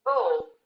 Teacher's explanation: O와 L이 사이가 거리가 멀기 때문에 어를 첨가하는데